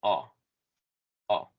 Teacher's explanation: Como si fuéramos a decir una O, vamos a poner nuestra boca como con la configuración para decir una O, pero tratando de decir una A y sale el sonido A.